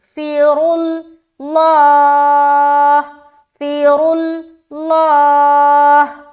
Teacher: را کو موٹا رکھنا اور لام کو بھی موٹا رکھنا۔ لام اس وجہ سے موٹا ہو رہا ہے کہ لفظ اللہ کا لام سے پہلے پیش ہے، اور را اس لیے موٹا ہو رہا ہے کیونکہ اس کے اوپر پیش ہے۔